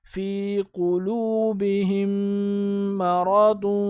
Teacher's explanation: بہم یہاں پر غنہ کریں گے، ہا کو میم کے ساتھ ملائیں گے، یہ والی میم نہیں پڑھی جائے گی، جیسے قاف پیش کو، لامو پیش لو، قلو با زیر بی، قلوبی، ہا میم زیر ہم، قلوبہم، میم زبر ما، قلوبہم ما، را زبر را، قلوبہم ما را، داد دو پیش دن، قلوبہم مرض، تو پورا اس طرح ہوگا۔